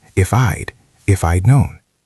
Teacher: We almost never say if I had known clearly. We squash it together. It becomes if I'. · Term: contraction